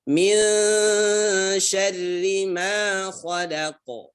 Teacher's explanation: nun sukun bertemu huruf sya di sini ya, ikhfa. Ya, dengan gunnah samar.